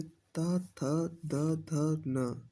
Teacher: उसके बाद है दंती व्यंजन जिन वर्णों का उच्चारण करते समय जीभ का अग्रभाग हमारे ऊपर के दांतों को स्पर्श करता है उन्हें दंती व्यंजन कहते हैं।